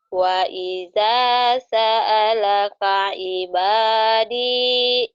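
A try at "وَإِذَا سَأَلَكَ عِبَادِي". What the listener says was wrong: Ain yang nggak keluar. Ain. Ain. Wa idza sa'alaka ibadi. Betang ain ya, ainnya belum mantep.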